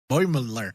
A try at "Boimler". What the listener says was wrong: No, Boimler. There's not 3 syllables. 2.